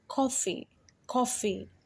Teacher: has coffee coffee it has two syllables cough and free but if you're careful you can hear the first syllable is longer and stressed than the second